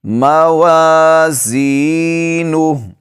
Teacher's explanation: یہاں پر الف مدہ ہے، اس کو کھینچیں گے، یا مدہ ہے، اس کو کھینچیں گے، نون کو نہیں کھینچیں گے، ہا الٹا پیش ہو پڑھیں گے۔